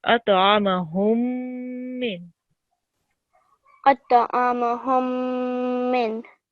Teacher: if you have a mim sakin like you have here, and it's followed by a mim mushaddid, it needs to be held for 2 seconds.